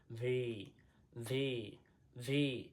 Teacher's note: উপরের দাঁত নিচের ঠোঁটের সাথে লাগবে